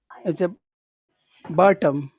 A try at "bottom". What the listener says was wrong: Bottom. Big. Make the vowel sound big. Bottom. Because before you were saying you almost give it equal time. Bottom. That's how you were saying bottom. But it's not bottom.